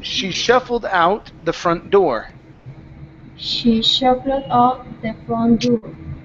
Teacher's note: our stress is going to be here on door.